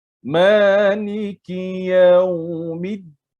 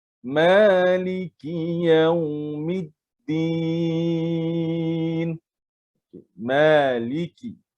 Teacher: Ma itu dibaca 2 harakat.